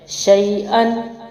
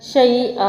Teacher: अलिफ को मैंने नहीं पढ़ा जारी रखने की सूरत में, लेकिन वक्फी सूरत में मैंने अलिफ मद बना दिया